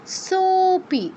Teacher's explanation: এখানে ওকার তো এমনি দীর্ঘ পরে লুপ্ত থাকায় সোপি আরো বেশি টেনে বলতে হবে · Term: প্লুত